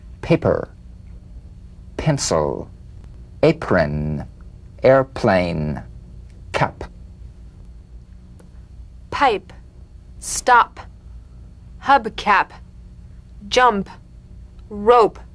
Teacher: p is played with a light springing apart of the lips